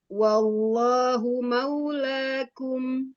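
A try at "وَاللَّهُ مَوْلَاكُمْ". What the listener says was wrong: Lanya jangan la ya bukan maula. Dibuka.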